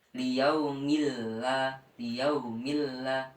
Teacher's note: tanwin tidak terbaca tetapi langsung masuk ke huruf lam selanjutnya